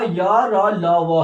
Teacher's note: ठीक, अब जो आपका य र ल व है, ये क्या है, अल्प प्राण है। य र ल व अल्प प्राण है, लेकिन य र ल व क्या होते हैं, ये सघोष होते हैं